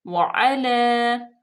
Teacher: वअला, वाव पे भी जबर है, आइन पे भी, और लाम पे जो है वो फतह इशबाई है, खड़े जबर है, तो इसको हम थोड़ा सा और लंबा करेंगे